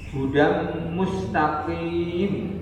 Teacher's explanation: idgham bi guna, tanwin ketemu dengan mim